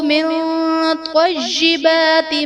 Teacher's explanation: من طیبات میں نون ساکن کے بعد حروف اخفا میں سے طا ہے تو یہاں پر اخفا کا قاعدہ ہوگا، یعنی نون ساکن میں ہم غنہ کر کے پڑھیں گے۔